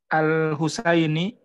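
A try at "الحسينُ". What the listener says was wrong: Al-Husainu kalau nggak ada yang bikin kasrah berarti dhammah.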